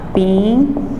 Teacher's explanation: Semivogal mais uma vogal. O U como semivogal e o I como vogal.